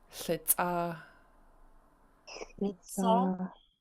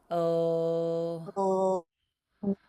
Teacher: So for it smells good, I'm going to zoom in so it's easy to see for everybody. And an L in Lingit is a voiceless L. So you make a sound, but you don't activate your voice box.